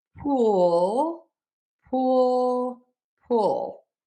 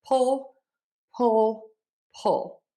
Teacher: The difference again is with the rounding and the tension.